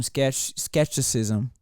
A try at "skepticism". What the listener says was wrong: I want you to know it sounds like you're saying exorcism, and I was like, it's spooky.